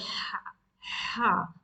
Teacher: From the middle of the throat. So your articulation point will be from the middle of the throat, but it will be forcible blow of air from your throat and constraining your throat at the same time. So when you say ha, like you press your throat and then try to speak ha.